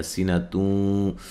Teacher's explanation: یہاں نون تنوین کا ادغام مع الغنہ ہے